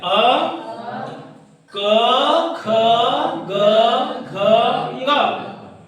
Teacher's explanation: तो इन सब का उच्चारण स्थान क्या है कंठ है